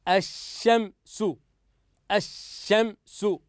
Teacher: اللام كتبناها لكن لم ننطقها